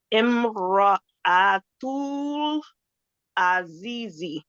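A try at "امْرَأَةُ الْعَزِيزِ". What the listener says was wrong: Perfect.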